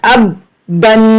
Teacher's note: یہاں پر غنہ بھی کریں گے تنوین کے اوپر، اب بن۔ حمزہ با زبر اب، با 2 زیر بن، اب بن، اب بن۔